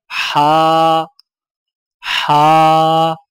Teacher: زبان کی جڑ کو حلق کی طرف مضبوطی سے دباتے ہوئے باریک اور رگڑ کھاتی سانس میں پڑھیں